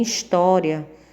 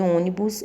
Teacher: em história o som representado pelo ó é aberto e em ônibus ele é fechado